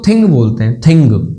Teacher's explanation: तो देख सकते हो स ए तो बराबर है, पर आपको ग नहीं मिलेगा, सिर्फ ये मिलेगा। ये न और ग दोनों की आवाज बन गई